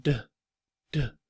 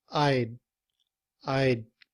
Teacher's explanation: we don't blow the air after the sound of the word D